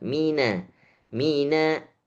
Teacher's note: Na-nya ditipiskan lagi. Mina bukan mino.